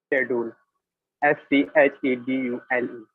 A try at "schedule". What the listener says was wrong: शेड्यूल, शेड्यूल क्या होता है? ये आप लोगों से स्कै क्यों नहीं पढ़ा जाता?